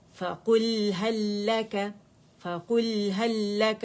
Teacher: लाम लाम के अंदर मर्ज हो गया, और मर्जिंग के लिए पहला सुकून वाला लेटर चाहिए और दूसरा मुतहरिक चाहिए, ठीक है। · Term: इदगाम